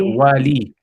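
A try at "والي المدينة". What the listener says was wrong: this is ism naqis. So therefore you wouldn't pronounce like you wouldn't pronounce the ya there. So you would say walil because it's like it's going on to Medina. So you can say wali al Medina, it's fine. Wali al Medina.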